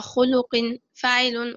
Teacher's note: تكونت منها الكلمة على صيغة فعل بالنبر على حركة الخاء من الكلمة والفاء من الصيغة